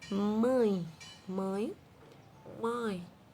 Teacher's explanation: Então, ele é nasal, parte pela boca, parte pelas fossas nasais, pelo nariz. · Decrescente, porque temos primeiro a vogal e depois a semivogal. E nasal, porque o som passa parte pela boca, parte pelo nariz.